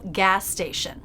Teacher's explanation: one S, connecting the two words. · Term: linking the same consonant